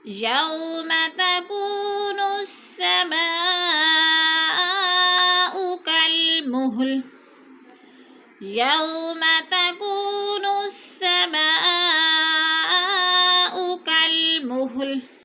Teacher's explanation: السماء پہ مد متصل ہے، چار الفی مد کھینچ کر پڑھنا ہے